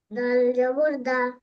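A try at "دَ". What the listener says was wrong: টান দিয়ে পড়েন, দাল জবর দা।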